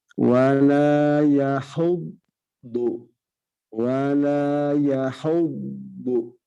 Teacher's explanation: Huruf do di sana harus jelas pengucapannya tebal dan makhorijul hurufnya sisi lidah kiri atau kanan menyentuh gigi geraham kiri atau kanan.